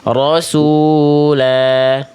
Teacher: Kalau berhenti di rasul, jadi nggak dibaca rasul, tapi rasulah ya, berhenti pada huruf yang berharokat fathatain ya, maka dibaca tidak jadi sukun, tapi dibaca jadi harokatnya vokal, jadi panjang 2 harokat ya, vokal A-nya namanya mad iwad, rasulah gitu Ya, ya.